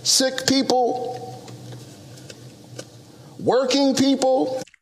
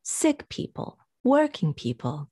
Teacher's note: people is not usually stressed because we know we're talking about people